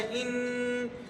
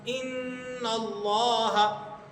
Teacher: ان نون کی آواز آپ کو ناک سے نکلتی ہوئی محسوس ہوگی۔ آپ اس کو تھوڑا لمبا کیجئے، ان اللہ، ان تھوڑا سا لمبا کریں، ان، تو یہ ناک کے بانسے سے ہو کر یہ آواز نکل رہی ہے۔ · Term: غنہ